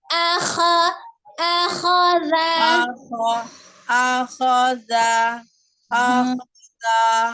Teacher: Dari huruf alif ke kha, A dengan kha sama-sama al-halki.